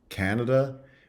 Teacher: schah in Stressless position so we talked about the contrast between Canada which has a full vowel in the first syllable and then schwas is in the second two Cana versus Canadian